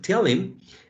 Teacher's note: first we have an elision, the elision of the initial sound of the second word.